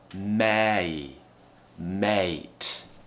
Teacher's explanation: So tongue should be near the front in the middle of the mouth. And then the tongue's going up and we're doing that smiling shape again.